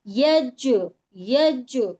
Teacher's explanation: ہم اس کو ایسے پڑھیں گے کہ دوہری آواز آئے, اس کے مخرج ٹکر کھا کر الگ ہوتے ہیں